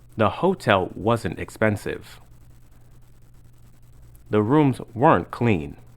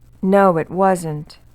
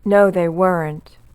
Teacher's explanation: negative contractions like wasn't and weren't are always stressed